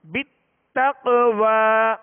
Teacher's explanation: قلقلہ کریں گے, آواز میں جنبش ہوگی, آواز لوٹتی ہوئی آئے گی. بِالتَّقْوَى بغیر قلقلہ جیسے بِالتَّقْوَى بِالتَّقْوَى.